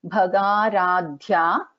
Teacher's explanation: Bha is a Mahaprana, Ga is an Alpa Prana, and Dha is a Mahaprana